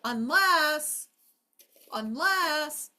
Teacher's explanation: Second syllable lasts the longest. double the s.